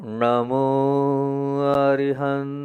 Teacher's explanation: का उच्चारण करो जीव को पीछे दो बार ले जाना है ण जो है ना पीछे जाता है पीछे मतलब जीव को पीछे ले जाना